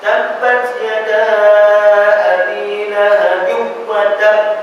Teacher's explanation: Idgham. Ya, idgham memasukkan ma'al gunna beserta dengung naqis yang berkurangan. Kurang sikit. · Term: idgham ma'al gunna naqis